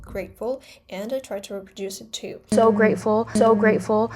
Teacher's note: Zendaya uses a glottal stop in grateful. She doesn't say grateful, she says grateful, grateful, and I try to reproduce it too.